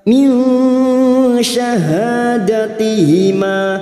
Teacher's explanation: kita samarkan bunyi nun sukun dan mendengung 3 harakat. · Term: ikfa hakiki